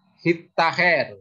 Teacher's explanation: T dari awalan itu hilang atau digabung ke dalam konsonan dental itu supaya konsonan tersebut didua kalikan